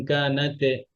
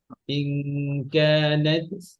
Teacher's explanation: তায়ের সিফাত হচ্ছে এটা হামস।